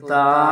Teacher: زبان کی جو نوک ہے اس کو جو سامنے کے چوڑے سے اوپر کے جو دو دانت ہیں ان کی نوک پر لگائیں گے